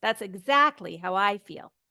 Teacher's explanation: So I and exactly can be your high points of that sentence.